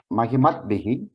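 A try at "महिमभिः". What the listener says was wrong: Not Takara. Mahimabhihi. We hear the Makara, only the Nakara gets deleted. In Mahiman, so Mahi, Ma, and Akara is also there. Only the Nakara gets deleted. Mahima, and then Bhyam, Bhihi, Bhyaha, everything.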